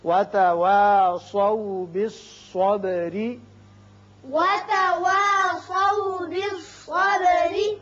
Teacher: وتواصوا سواد کو پر پڑھیے، با کی صفت قلقلہ، را باریک ہوگا اس لیے کہ نیچے زیر ہے